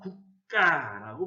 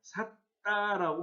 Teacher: 그러니까 결국 된소리 되기 현상이라고 하는 것은 예사소리가 된소리로 바뀌어 발음되는 현상이라고 할 수 있습니다